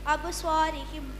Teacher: பா வந்து கல்கலாவுடைய எழுத்துனால அதை அசைச்சு ஓதணும்.